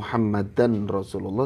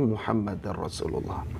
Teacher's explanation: Fathatain atau tanwin fathah bertemu dengan ra, ini juga idgham bila gunnah. Jadi bukan Muhammadan Rasulullah tapi Muhammadar Rasulullah.